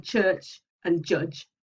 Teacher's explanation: they are a stop followed by a fricative